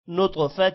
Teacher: طا پر قلقلہ ہوگا طا کو موٹا بھی کرنا ہے